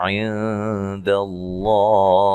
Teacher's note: یہاں نون ساکن کا اخفا مع الغنہ ہے، باریک اخفا ہے